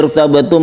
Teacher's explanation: mim mati bertemu dengan fa disebut izhar syafawi tidak kita dengungkan